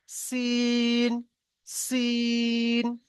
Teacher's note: এর আওয়াজটা সিন, মানে হালকা আওয়াজ, একদম গাড়ির সিটি যেমন বাসে